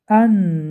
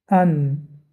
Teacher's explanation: وقتی که ما ان میگوییم قسم هوا از بینی خارج می شود از دماغ و قسم هوا آمده تا پیش دندان ها می رسد.